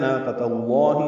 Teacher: تا کو لام اس میں جلالہ سے ملانا ہے